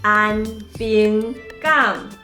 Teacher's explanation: 咱会发现安甲平拢毋是读本调，干那上尾迄个港伊是读本调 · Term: 变调